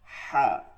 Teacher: গোলহা ভারী আওয়াজে পড়তে হবে, ভারী আওয়াজে, আওয়াজটা হবে কি ভারী। লম্বা হা হচ্ছে উচ্চারণটা হবে হলকের মধ্যখান থেকে হালকা চাপ দিয়ে হালকা আওয়াজে, হা। ঠিক আছে, এই তফাৎটা বুঝতে হবে, হা আর হচ্ছে হা, হা আর হা।